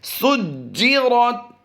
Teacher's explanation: جیم میں ہم نے جماؤں کے ساتھ قلقلہ کرنا ہے